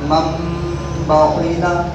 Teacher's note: نون ساکن کے بعد نون کی آواز کو میم سے بدلنا ہے، تب ابدال بنے گا. وہ ہے میم نون زبر مم با زبر با.